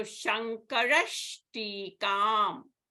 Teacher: So here the Visarga is followed by Ta. So the Visarga will be changed to Sha.